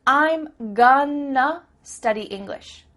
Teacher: That word to simply becomes a.